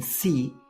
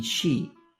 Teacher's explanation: the s sound in see and the sh sound in she are made by placing the tongue only a few millimeters away inside your mouth